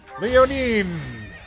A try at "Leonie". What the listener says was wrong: no N at the end of her name. It's Leonie. Leonie.